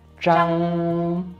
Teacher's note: it's a first tone, which is kind of a flat pitch